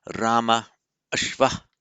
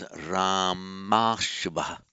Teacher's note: A plus a becomes a, whether the a is long or short.